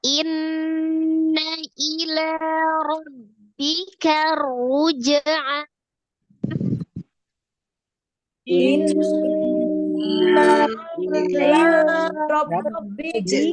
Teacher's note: ada nun musaddada ya, nun tasdid wajib gunnah, gunnahnya tingkatan yang pertama akmal matakun ya, nun musaddada.